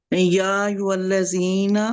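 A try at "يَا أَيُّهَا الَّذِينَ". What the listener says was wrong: ایھا الذین، ہا کو کلیئر کرے،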